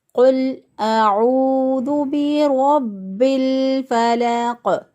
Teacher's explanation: قوف پر قلقلہ ہوگا کیونکہ اس پر ہم وقف کر رہے ہیں، تو وقف کی حالت میں قاف پر قلقلہ ہو جاتا ہے۔ جب قاف ساکن ہو جائے، وقف کی حالت میں قاف ساکن ہو جائے گا اور اس پر قلقلہ ہو جائے گا۔